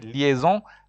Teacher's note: and N i is from I and N is pronounced R the S and the joining with the I and N makes a z sound